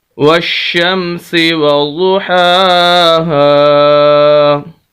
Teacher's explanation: یہاں پر ہم واو کو شین کے ساتھ ملائیں گے، درمیان میں الف اور لام ہے، ہم ان کو نہیں پڑھیں گے